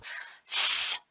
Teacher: the lips are neutral, the jaw drops, and most importantly, the tongue is between the teeth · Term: TH sound